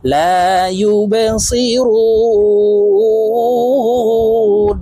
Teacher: তো এখানে রুকে তিন আলিফ টেনে নুনকে সাকিন করব।